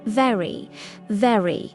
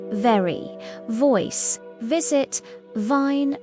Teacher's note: Your top teeth touch your bottom lip. Very very feel your teeth on your lip.